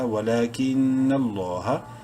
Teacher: لام زبر نہ، لفظ اللہ سے پہلے نون پہ زبر ہے، لام کو بولڈ اور کھڑی زبر کی وجہ سے لام کو ایک الف کے برابر لمبا کریں گے